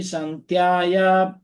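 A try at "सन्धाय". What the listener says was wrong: And the second line, just one word, sandhaya. Sandhaya. I think you said sandhyaya.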